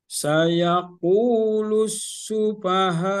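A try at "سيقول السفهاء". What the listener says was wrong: Sempurnakan bunyi fa-nya. Fa.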